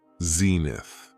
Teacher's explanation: It has 2 syllables, and the stress is on the first syllable